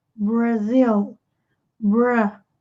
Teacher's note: E com relação à pronúncia, muito cuidado com esse R e o L do inglês, porque são diferentes do português. Em inglês, o R é enrolado.